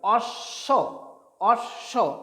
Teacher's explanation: তো এক্ষেত্রে অ তালবস্যে ব, এখানে এই বয়ের উচ্চারণ আসবে না, এখানে তালবস্যটার দ্বিত্ব উচ্চারণ হবে